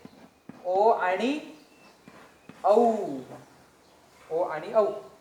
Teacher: कंठौष्ट्य. कंठ आणि ओष्ठ यांच्या दोघांपासून उच्चारण होतो ज्या वर्णाचा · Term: कंठोष्ठ्य